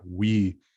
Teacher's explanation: high front vowel that it's hard for me to characterize as anything other than buzzy so like we is um that's interesting it's not just v